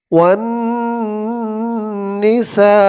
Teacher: সা এখানে চার আলিফ টান হবে মধ্যে মুত্তাসিল